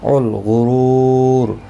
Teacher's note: غین مستعلیہ ہے، پر پڑھا جائے گا، را پیش کی وجہ سے پر پڑھا جائے گا۔ رو و مدہ ہے، ایک الف کی مقدار کے برابر کھینچ کر پڑھیں گے، را ساکن پڑھا جائے گا، اور وقف بالاسکان یہاں پر ہوگا۔